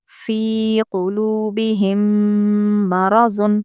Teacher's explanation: میم ساکن کے بعد میم ہے اس لیے غنے کے ساتھ پڑھیں گے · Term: ادغام شفوی